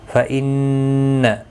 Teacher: نون مشدد پر غنہ ہوگا، نہ اللہ کا لام زبر کی وجہ سے پر بھی پڑا جائے گا، اور اس کے اوپر ایک کھڑی زبر بھی ہے، ایک الف کی مقدار کے برابر کھینچ کر بھی پڑھیں گے۔